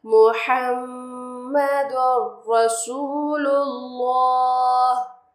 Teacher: تو را پہ اگر شد نہ بھی ہو تو آپ نے شد لگانا ہے اور ڈائریکٹلی تنوین والے لیٹر کو را اور لام کے شد سے کنیکٹ کرنا ہے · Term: ادغام یرملون